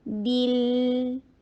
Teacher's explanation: لام کے اوپر تھوڑا سا ٹائم نکالیے اور با کے نیچے کسرہ، ای کی ساؤنڈ کرنا ہے. بیل جبڑے کو کھولیے، آرام کے ساتھ تسلی کے ساتھ اس کو ادا کیجئے.